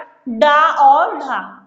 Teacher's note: उत्क्षिप्त व्यंजन जिसमें डा और ढा है।